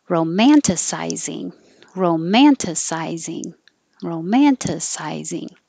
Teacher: Sci is your secondary stress